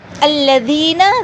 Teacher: زال کو نرمی سے اور تھوڑا سا لمبا کریں گے، زیر کے بعد یا آ رہا ہے.